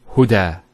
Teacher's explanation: There's the elongation as well, because the fatha followed by an alif. If this wasn't there, it will be huda, but huda with the alif.